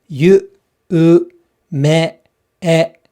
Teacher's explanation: However, yume, this is also 2 syllables, but 4 beats. So the 2 syllables are, of course, yu and me, and the 4 beats are yu, u, me, e.